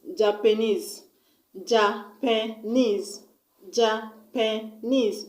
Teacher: It has 3 syllables. And I'm going to stress on the last syllable which contains E-S-E.